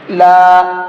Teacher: اب یہاں پر دیکھیے الف ہے اور الف سے پہلا حرف ہے لام، اس کے اوپر زبر ہے، تو یہ الف مدہ ہو گیا۔ الف مدہ کو ایک الف کے برابر یعنی 1 سیکنڈ تک کھینچ کر کے پڑھیں گے